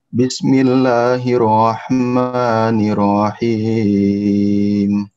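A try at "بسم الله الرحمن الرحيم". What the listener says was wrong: Hati-hati di kata bis, bisnya dialirkan.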